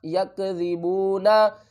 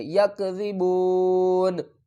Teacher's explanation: وقف کی صورت میں نون کو ساکن پڑھیں گے